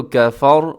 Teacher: وقف کریں گے تو کفر اور را موٹا ہو جائے گا جب ہم وقف کریں گے، ملا کے پڑھیں گے تب بھی موٹا ہوگا اور وقف کریں گے تب بھی یہ پر پڑھا جائے گا، موٹا پڑھا جائے گا۔